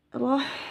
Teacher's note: Ha sukun itu juga ada sifat hamasnya ya, jadi harus dikeluarkan aliran nafasnya.